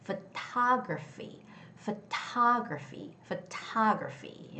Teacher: The word photography has the second syllable stress.